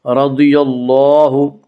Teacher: اللہ کا لام پر پڑھا جائے گا